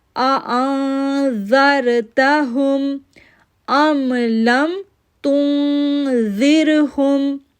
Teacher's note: زال کو سافٹ پڑھنا ہے اور را کے ساتھ جوڑنا ہے